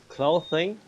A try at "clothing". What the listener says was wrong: Mm-hmm. Clothing, yeah.